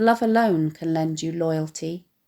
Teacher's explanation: Note the alliteration of love, alone, lend and loyalty in this line, which also fall on stressed syllables.